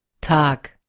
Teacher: can you hear that k as well instead of g?